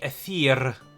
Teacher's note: Aethir with the rolled R at the end